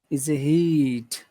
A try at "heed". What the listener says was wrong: So because if you say hit, I'm not sure if you're saying hit like hit or if you're saying here and you're not pronouncing the R, but it doesn't sound like heed because heed, that E is very big, especially because of the D at the end of the word. So it's really important to say heed, make it very big, a very big,